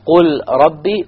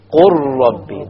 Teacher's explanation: You say قُرْ رَبِّي. The lam is completely dropped because you merge the ra with the qaf.